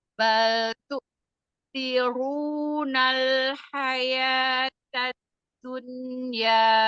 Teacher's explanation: walaupun dia dhamma, taknya harus tipis